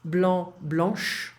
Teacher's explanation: Blanc, please do not pronounce the C.